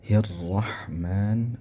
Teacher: ra-nya di sini ialah tebal, ya, ra tafkhim namanya